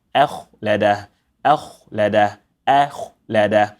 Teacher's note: I have to unstretch my lips in order to get the heavy sound for the kha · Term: silent kha